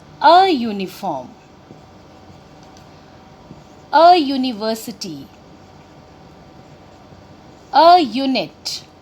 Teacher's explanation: when we pronounce this word uniform, आपकी sound आ रही है य. This is a consonant sound.